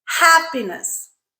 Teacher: just the pure P sound no aspiration